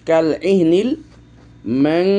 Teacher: সেখানে দেখেন আমরা নুন সাকিনের পর ফা এসেছে, এই জন্য আমরা কীভাবে পড়ছি, কাল ইহনিল ম্যাং। নুন সাকিনের উচ্চারণটাকে আমরা ইখফা করলাম, আর ইখফা করতে গেলে তখন গুন্না চলে আসলো।